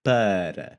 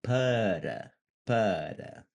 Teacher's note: my tongue's tapping the top of my roof, the roof of my mouth there